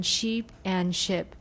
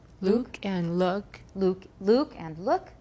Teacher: pairs of vowels that differ in length could be transcribed using one.